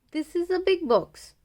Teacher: So this is the first type of sentence which has a falling tone. It is a simple sentence or a statement.